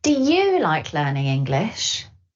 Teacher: If you want to make it clear who you're asking the question to, you can stress you, which makes the vowel sound longer.